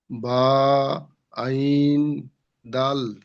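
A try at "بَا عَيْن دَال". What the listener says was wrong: জি, বাটি একালিফ টান হরফ, আইনটি তিন আলিফ টান হরফ, দালটি তিন আলিফ টান হরফ। আপনি একটু টান দিয়ে পড়ার চেষ্টা করেন আমার সোনা ভাই। জি, আমার সোনা ভাই, হরফের টান দিতে হবে। যে হরফের যে পরিমাণ টান আছে আপনারা 1 নম্বর আর 2 নম্বর সবকে পড়েছেন, সেই পরিমাণ টান আপনাকে দিতে হবে। একালিফ টান বলতে একটি সোজা আঙুলকে স্বাভাবিক অবস্থায় বন্ধ করতে যে সময়টুকু লাগে সেই সময়টুকুকে বোঝায়।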